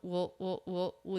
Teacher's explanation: a little quick W and then dark l sound